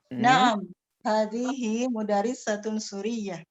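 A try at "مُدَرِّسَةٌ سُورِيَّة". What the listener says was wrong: Ibu kurangnya di situ di ro ketika ditasdid ya. Kasroh ini mudarrisatun. Seperti itu cara bacanya. Jadi kita kalau dalam ilmu tajwid ya'ta'u kulli harfin haqqahu wa mustahaqqahu, memberikan setiap huruf hak dia. Jadi kalau dia ada tasdid kita tekan, kalau dia panjang kita panjangkan. Seperti kata sud, setelahnya ada waw sukun, maka kita membaca Suriah.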